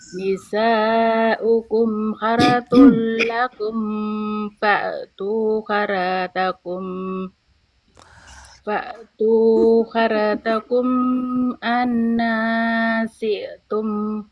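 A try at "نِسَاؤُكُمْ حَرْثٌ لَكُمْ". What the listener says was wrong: Ini butuh diperbaiki nih Bu. Butuh perbaiki, panjang pendeknya diperbaiki, makhrajnya pelan-pelan diperbaiki, dengungnya gitu. Ini dilewatin semua. Nisa'ukum harsul lakum.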